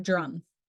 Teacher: Consonant D is a voiced alveolar plosive, similar to the T, but with the simultaneous vocal cord vibration. You can put your hand on your throat to feel the vibration.